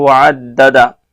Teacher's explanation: یہاں وقف کر رہے ہیں اس لیے وعددہ کو ہاں ساکن بنا دیے، وقف کی وجہ سے ساکن کر دیے اس کو.